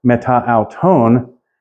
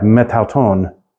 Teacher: The Greek would end up dropping, would not pronounce that A at the end. They would just, you would have metauton, kind of slurring this together in a way.